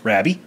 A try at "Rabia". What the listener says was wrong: But there's an A. Rabia.